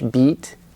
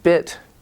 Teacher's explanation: it's longer in English, beat, and in bit, it's shorter, but your tongue is more relaxed.